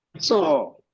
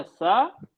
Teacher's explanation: जबान को उठाया तो सौ बन गया, नीचे किया तो सा बन गया